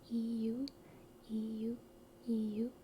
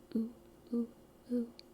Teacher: the way we say U in English is EU, rather than the non-diphthong would just be oo